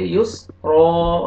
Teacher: را کو موٹا کر کے پڑھیں گے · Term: را موٹا